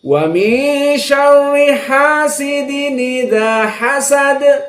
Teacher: dikarenakan di sini bertemu dengan Hamzah, maka Hamzahnya dibuang. Harokat Hamzah yang kasrah dimasukkan kepada tanwin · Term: naql